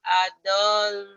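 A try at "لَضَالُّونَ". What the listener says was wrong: Kok adol ini la, bukan adol. La. La dol. La. Bukan adolun, la dolun, la dolun. Wa idza ra'auhum qalu inna haula qalu inna haula ila dhallun gitu ya.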